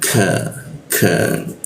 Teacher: lidahnya kita turunkan sehingga ada hembusan udara ketika membaca ka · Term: huruf K